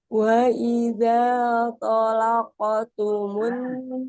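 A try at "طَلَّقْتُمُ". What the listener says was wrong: tasdid di lamnya. Talaqa.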